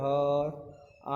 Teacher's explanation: ह और आ का उच्चारण स्वर यंत्र से होता है।